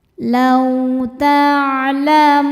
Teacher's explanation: Law ada huruf lin sebab ada waw sukun sebelumnya fathah. Cara bacanya dilembutkan.